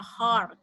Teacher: Jadi A-nya lebih panjang dan lebih bundar.